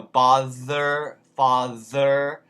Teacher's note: those th's become a v